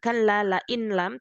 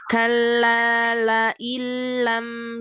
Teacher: ada W nya di tengah lalu ayat ke-15 Kalla lailam lailam nun sukun ketemu lam idgham bilagunnah